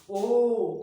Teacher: जब आपने ओ बोला तो वृत्त बन रहा है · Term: वृत्तमुखी